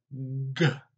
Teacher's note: Like the K, you're gonna lift the back of the tongue up and stop that airflow coming out the mouth or the nose just for a little bit, and then it let it pop out, explode. The trick between the K and the G is the voice.